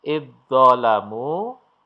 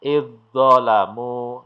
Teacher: dal sukunnya lenyap atau tidak dibaca. Idzolamu, langsung masuk dho yang bertasdid. Ya, inilah yang disebut dengan hukum bacaan idgham mutajanisen.